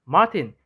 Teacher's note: further back than in standard southern british english and raised with weak lip rounding